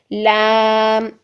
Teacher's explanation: ये जुबान के बारीक आगे वाले जो किनारे हैं ना, यहाँ से अदा होता है जब ये ऊपर दांतों, सामने वाले दांतों के मसूड़ों से लगता है